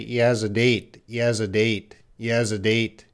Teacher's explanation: H's are often reduced. He has a. It's gonna sound like one word. It's all linked. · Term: linking